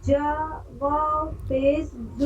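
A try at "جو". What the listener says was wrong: जा नहीं, जौ थोड़ा मोटा पढ़ेंगे। जौ वाव पेश जू।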